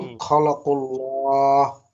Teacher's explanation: আল্লাহ শব্দের লামকে পুর করে পড়তে হবে